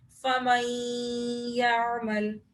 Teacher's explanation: نون ساکن کے بعد یا آ رہا ہے، اس لیے یہاں پر ہم غنہ کریں گے